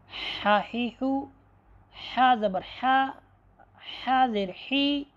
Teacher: حلق کا درمیانی حصہ جو منہ کی طرف ہے وہاں سے حرف ہا ادا ہوتی ہے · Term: وسط حلق